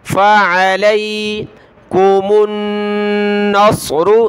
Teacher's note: साद को मोटा पढ़ना, इसकी जगह आपने सीन नहीं पढ़ना।